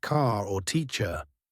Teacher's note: In most parts of the United States, we pronounce the R at the end of words like car or teacher. In many parts of England, they do not.